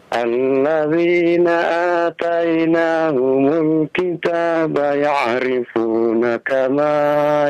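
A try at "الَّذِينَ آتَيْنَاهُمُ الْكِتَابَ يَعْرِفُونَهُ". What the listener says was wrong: Ya'rifunahu, ada hu itu ketinggalan, Pak. Konsentrasi ya, konsentrasi.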